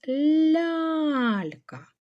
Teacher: Ось у нас аж два м'яких звука л